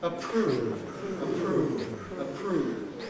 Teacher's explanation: a voiceless ah of approved approved try that approve approve approve the aspiration takes the form of de-voicing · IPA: əˈpruːv